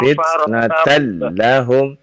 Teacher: Lam tasydid tapi tidak dibaca terlalu lama ya.